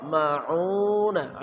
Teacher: ain ma'una tengah kerongkongan